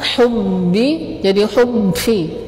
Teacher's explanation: jangan sampai pada huruf ba itu sifat jahar dan syiddahnya itu jadi hilang. Yang tadinya tertahan hubbi jadi hubbi.